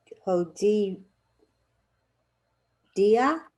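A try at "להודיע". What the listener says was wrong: Exactly, lehodia. Exactly.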